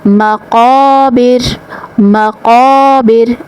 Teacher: الف مدہ کا قاعدہ، 1 الف کے برابر آواز کو کھینچیں گے۔